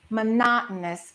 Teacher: >> There are four O's in that word. So, we don't say mono. We stress the second syllable.